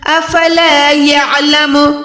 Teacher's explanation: आइन को प्रॉपर हलक के दरमियान से निकालना है